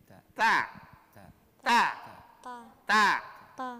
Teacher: ujung lidah menyentuh antara gigi atas dan gusi.